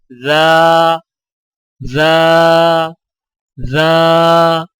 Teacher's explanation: ذال اور زا کی آواز میں فرق. ذال نرم آواز ادائیگی کے وقت زبان کی نوک کو سامنے والے اوپر کے دو دانتوں کے اندرونی کناروں سے نرمی سے لگائیں